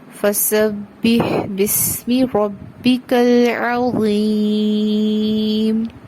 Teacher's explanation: عین زبر آ ایک حرکت اور عین کی آواز کو حمزہ کی آواز سے واضح کرنا ہے